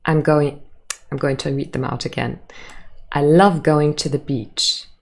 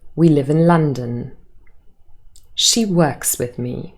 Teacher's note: all of those statements have a falling intonation at the end